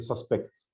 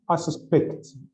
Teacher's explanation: Words which can be used as both nouns and verbs. The tendency, the noun has a stress in the first syllable, with the verb has a stress in the second syllable.